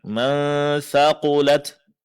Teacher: Nun sukun di sini dinungkan dan disamarkan. Caranya jangan sentuh makhraj huruf nun tapi arahkan ke makhraj huruf setelahnya. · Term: ikhfa